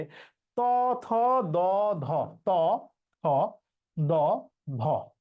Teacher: অ কে অল্প প্রাণ, ত কে অল্প প্রাণ, থ কে মহাপ্রাণ, দ কে অল্প প্রাণ, ধ কে মহাপ্রাণ ধ্বনি বলা হয়